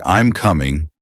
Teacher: your voice usually falls